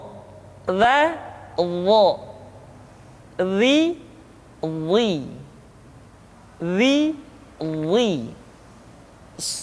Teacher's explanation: diucapkan dengan menyentuhkan ujung lidah dengan dua gigi seri bagian atas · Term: huruf dha